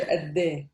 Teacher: sometimes we don't pronounce the last sheen. We say adde.